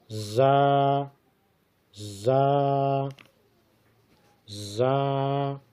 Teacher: زبان کی نوک اور اوپر نیچے کے دانت جب آپس میں ملے تو اس سے زا ادا ہوتی ہے۔